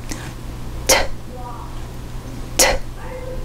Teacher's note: T▁は無声音ですので息の音になります。